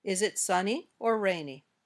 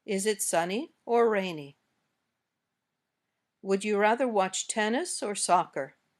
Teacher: the intonation goes up on the first choice and down at the end.